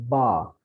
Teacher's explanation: there's a touch between two lips